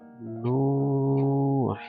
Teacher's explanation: Ada dhammah setelahnya waw sukun, maka nu ini akan menjadi panjang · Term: mad tabi'i